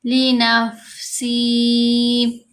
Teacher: فا حروف ہمس میں سے ہے، اس کی آواز کو بہت کمزور کر کے پڑھیں گے